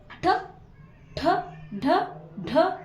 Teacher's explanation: ನಾಲಿಗೆಯ ಮೇಲ್ಭಾಗದಿಂದ ಉತ್ಪತ್ತಿಯಾಗುವ ಈ ಅಕ್ಷರಗಳಿಗೆ ನಾವು ಏನಂತ ಹೇಳಿ ಕರೀತೀವಿ ಅಂತಂದ್ರೆ ಮೂರ್ಧನ್ಯಾಕ್ಷರಗಳು